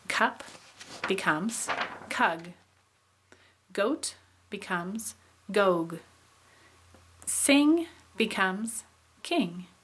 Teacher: changes to a velar sound because of another velar in the word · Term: velar assimilation